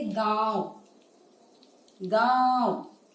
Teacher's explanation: जब हम इन अक्षरों को बोलेंगे तो जो ध्वनि है वो हमारी नाक और मुख दोनों से निकलती है, कंठ से आती है। · गांव बोल के देखने से आपको पता चलेगा वो गले से भी आ रही है और नाक से भी ध्वनि निकल रही है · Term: अनुनासिक